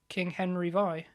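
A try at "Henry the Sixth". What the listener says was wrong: Henry VI, no, that VI is pronounced the sixth. It's a Latin thing. Yes, it's a bit like that.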